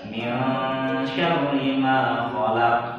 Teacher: Nah, sama qaf yang terakhir itu harus dipantulkan.